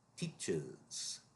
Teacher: The es is pronounced as a separate syllable here, so that is s.